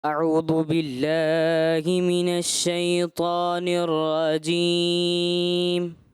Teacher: اعوذ کی ذال میں جو ہے رخاوت جو ہے وہ محسوس نہیں ہوئی، جس کی وجہ سے وہ دال سے کچھ ملتا جلتا مجھے محسوس ہوا ہے. اعوذ ذو رخاوت کے ساتھ جب پڑھیں گے نا، اعوذ ذو، صحیح ہے.